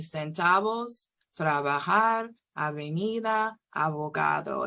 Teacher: the B sound is softer when it appears in the middle of two vowels or in the middle of a word